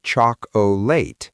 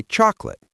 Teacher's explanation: That middle o just disappears into awah. It's because English is a stress timed language. · That middle O just disappears into a schwa.